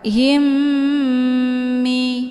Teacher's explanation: mim sukunnya dimasukkan ke dalam huruf mim yang hidup ataupun dileburkan dengan cara ditekan kemudian ditahan lebih kurang dua kali ketukan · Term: Idgham Mimi